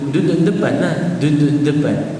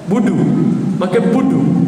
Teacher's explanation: huruf dal Arab lembut ya. Kita Melayu mengeraskan dal.